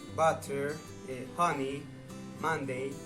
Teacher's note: this sound is also called the open mid-back unrounded vowel.